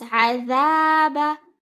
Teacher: the dhal is followed by an alif, so it will be read for 2 counts.